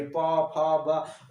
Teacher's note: अब हम प वाला वर्ग बोलेंगे दोस्तों, तो हमारे ओंठ दोनों आपस में टकराएंगे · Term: ओष्ठ